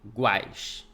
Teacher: Qual que é pronunciado com mais força? É o U, é o A ou é o I? É o A. O A é a vogal. · O A é a vogal. E o U? Semivogal. Por quê? Porque é mais fraca.